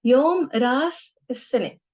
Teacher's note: In colloquial, we ignore the glottal stop, so instead of ras, it's ras.